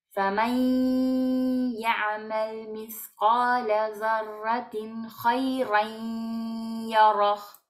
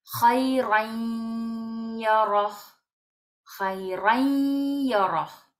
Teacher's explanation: ponemos a la ya como si tuviera un sonido de shadda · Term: idgham con gunna